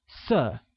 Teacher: Color, pronounced with a falling tone, becomes 色.